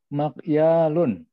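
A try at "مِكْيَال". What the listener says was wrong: Mikyalun bukan ma. Mi.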